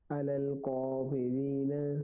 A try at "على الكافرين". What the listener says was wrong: قاف کو موٹا نہیں پڑھیں گے، باریک پڑھیں گے. علی الکافرین. جی کا یہ کھڑی زبر ہے اس لیے اس کو ہم لمبا کر کے پڑھیں گے.